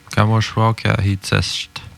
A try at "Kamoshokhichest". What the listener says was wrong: Pas Kahi. Mouchokhichest. C'est sûr que c'est difficile pour vous autres quand est-ce prononcer le A, quand est-ce prononcer telle voyelle, le I entre deux consonnes.